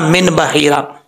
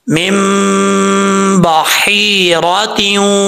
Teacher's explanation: वहां पे बा आ रहा है तो एक अलिफ की मकदार आपने गुन्ना करना है, और इसको ऐसे नहीं पढ़ना मिन बहीरा, मीम को छोटी मीम के साथ मिलाना है, ठीक है।